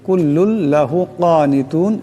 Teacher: কুল্লুন লাহু কানিতুন, এখানে বড় কাফ আছে, আওয়াজটা গলা থেকে আনতে হবে